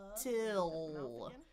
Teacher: Because there's a vowel next, I'm gonna really release that T.